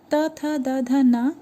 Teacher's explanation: उसी प्रकार आपका त वर्ग में त थ द ध न, इसको दंत का स्थान दिया गया है क्योंकि इसमें आपके जो जिह्वा हैं वो दांत से टच करते हुए निकल रहे हैं।